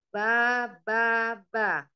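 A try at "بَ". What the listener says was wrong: Kalau yang ba itu berarti panjang. Tapi maunya 1 harokat. Ba. Ba.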